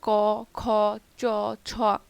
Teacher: কিছু ধ্বনি উচ্চারণের সময় ধ্বনিদ্বার কম কাঁপে, সেগুলোকে বলে অঘোষ ধ্বনি, যেমন ক, খ, চ, ছ এরকম।